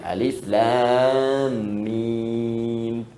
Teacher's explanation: Alif harful hawa, lam ke lisan, mim di bibir.